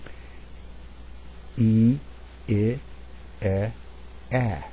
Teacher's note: as I say those first four vowels my jaw drops farther down each time I pronounce them